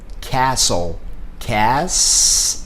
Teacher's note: Nós vamos dividir entre a letra S e a letra T. Só que observa que esse T não é pronunciado